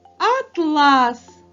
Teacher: А якщо ми переставимо наголос на другий звук а то в нас вийде атлас